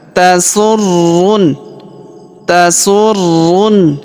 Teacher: Perhatikan huruf ruh berharakat tasdid. Maka kita tahan dan tekan